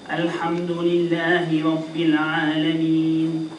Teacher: I think it was a tiny bit longer than 2 haraka. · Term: المد العارض للسكون